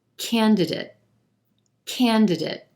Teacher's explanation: we've got three syllables here emphasis on the first syllable and the a is in black sound candidate now when that